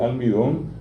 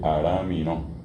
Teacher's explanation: el guaraní sustituye la L por la R.